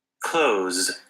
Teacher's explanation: they just say clothes with the Z sound they leave the th off